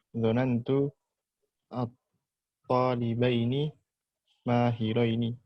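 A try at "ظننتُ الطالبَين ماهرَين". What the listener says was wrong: mumtaz, karena ini masuk dua-duanya maka ya dua-duanya.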